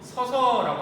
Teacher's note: 그래서 여기서 아가 탈락되었고 우리는 가다, 집에 가다라고 할 때 이 가 뒤에는 아서가 붙어야 되는데 가서라고 하지 않고 가서라고 얘기하기 때문에 여기도 아가 탈락되었고 우리는 서서, 서다, 똑바로 서 있다, 서다라고 얘기하는데 뒤에 어서가 붙었는데 어서라고 쓰지 않고 발음하지 않고 서서라고 하기 때문에 여기도 어가 탈락되는 경우입니다